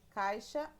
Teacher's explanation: O encontro do a e do i fica na mesma sílaba. Nesse caso, chamamos de ditongo, quando o encontro vocálico fica na mesma sílaba.